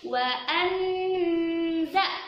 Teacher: wa anza, itu dibaca dengung yang lama juga